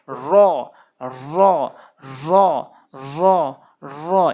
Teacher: পুর করে র র অর্থাৎ জিহ্বার আগা উল্টিয়ে উপরের তালুর সঙ্গে জিহ্বার আগাটি উল্টে উপরের তালুর সঙ্গে লাগাবেন